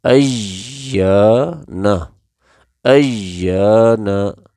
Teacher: یا کو ہم ایک الف یعنی 1 سیکنڈ کے برابر کھینچیں گے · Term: حرف مدہ